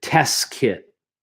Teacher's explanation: So I'm almost not pronouncing the second T here.